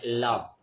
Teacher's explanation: நாக்குடைய நுனி வந்து மேல் முறத்துல சேர்ந்து வரமாதிரி